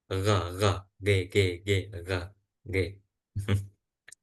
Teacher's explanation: huruf ghain itu seperti huruf G, G, G. Akan tetapi itu hanya sekedar menyempit dan nggak sampai menyentuh.